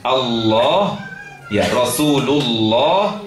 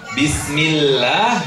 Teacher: Kalau huruf sebelumnya berharokat fathah atau dhammah maka dibaca tafkhim namanya. Allah, ya Rasulullah dibaca demikian. Tapi kalau huruf sebelumnya kasrah, Bismillah, maka menjadi tarqiq.